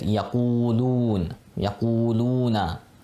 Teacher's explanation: It's not a word. So we want to stretch out that u and that lu